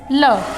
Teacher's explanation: जिनके उच्चारण में हवा जीभ के दोनों बगलों से बाहर निकल जाती है, उसे क्या कहते हैं, पार्श्विक व्यंजन कहते हैं। पार्श्विक जो होता है वो है अपने ल।